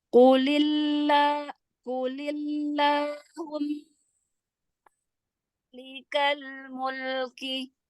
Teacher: Qulillah, la-nya panjang 2 harokat.